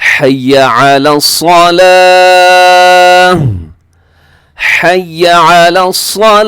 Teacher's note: آخر میں گول تا کو ہا سے بدل دیں گے